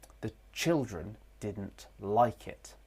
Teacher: Like is the tonic syllable. It's prominent. It stands out in the thought group.